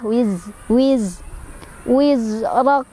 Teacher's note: Jadi ada desisan seperti suara lebah ya. Wiz, rak. Ro-nya dibaca secara tafkhim karena ro-nya berbaris fathah, ditebalkan. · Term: sofir